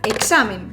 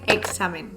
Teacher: Por un lado tenemos palabras como examen, donde tenemos una X intervocálica y que se pronuncia igual que las que aparecen a final de palabra. Es decir, si es con una pronunciación enfática, examen, se pronuncia con una KS, mientras que con una pronunciación más relajada suena como una GS